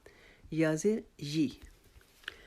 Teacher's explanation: یا بھی ہماری زبان کا درمیان اور تالو کے درمیان سے ادا ہوتا ہے، تو اس کو بھی یا زیر یی نہیں، یا زیر یہ غلط، یا زیر یی.